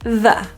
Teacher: Airflow with your tongue out. Feel some air coming out. If you're not feeling air, it may sound like a D. You can create that airflow with your tongue in or out of your mouth, but it's really about getting the airflow. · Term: TH pronunciation